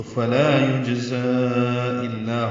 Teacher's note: یجزا جیم ساکن پہ قلقلہ ہے. زا کو تیز صفیر کی آواز سے ادا کریں گے اور لمبا کریں گے، کیونکہ کھڑا زبر کے بعد دوسری کلمے میں حمزہ آ رہا ہے.